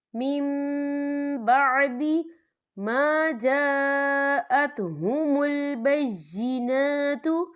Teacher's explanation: ہم پچھلے میم کو اگلے میم کے ساتھ ملا کر پڑھیں گے، اور ہم یہاں غنہ بھی کریں گے، اور غننے کی مقدار جو ہے 2 سے 3 سیکنڈ ہوگی. · نون ساکن کے بعد جو ہے بار ہے، تو یہاں پر اقلاب ہوگا یعنی تبدیلی ہوگی